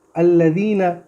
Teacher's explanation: دھیان سے ذال کا مخرج پڑھیں گے، زا نہیں پڑھیں گے